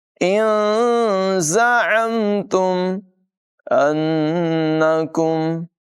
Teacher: نون مشدد میں غنہ ہوگا، کاف کو باریک پڑھیں گے